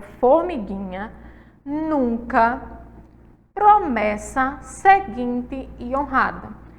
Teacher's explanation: todas elas aí ó possuem a penúltima sílaba mais forte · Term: paroxítonas